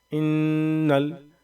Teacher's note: نون کے اوپر میں تشدید ہے تو ہم یہاں پہ غنہ کریں گے